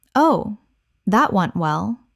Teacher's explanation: Said after something has gone spectacularly badly. The tone is flat. The delivery is calm.